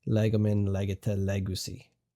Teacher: So we end up accenting the same root syllable. So it's still accented on the leg because even though we have two syllables in our stem and ending, the final syllable is now short, and we're able to jump all the way back out to the root.